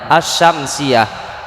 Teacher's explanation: ada Alif lamnya tapi dalam bunyi bacaannya seolah-olah tidak ada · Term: alif lam idgham